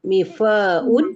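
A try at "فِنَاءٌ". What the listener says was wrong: Bukan, hurufnya terbalik. Finaun. Tidak ada mim. Fa. Finaun. Finaun.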